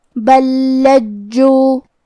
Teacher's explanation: کلمت لجو میں یہاں حکم ہے ادغام، لہذا ہم پہلے لام کو دوسرے لام میں ملا کے ایک ہی لام اور تشدید کے ساتھ پڑھیں گے